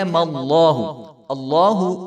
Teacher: تو لفظ اللہ کا جو نام ہے یہ موٹا پڑھا جائے گا، اور لفظ اللہ کے لام کے اوپر کھڑا زبر ہے تو اس کو ایک الف کے برابر لمبا کیا جائے گا۔